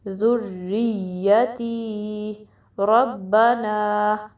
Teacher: با پہ پریشر ڈلے گا، نا کو 2 کاؤنٹ سٹریچ کرنا ہے